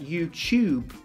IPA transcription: ju:ʧu:b